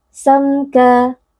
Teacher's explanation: Samka mim sukun berjumpa dengan huruf kaf izhar syafawi. Hukumnya adalah membaca bunyi mim sukun dengan jelas tanpa didengungkan